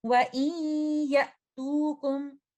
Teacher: इदगाम नाकिस करते हुए, इदगाम विद गुन्ना देते हुए, मोस्ट कंप्लीट गुन्ना का इसको टाइम देते हुए